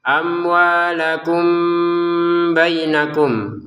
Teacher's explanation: Mim bertemu ba dibaca dengan samar ya